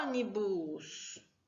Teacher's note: Ônibus. O ele tem um acento e é a sílaba mais forte, mesmo sendo só uma letrinha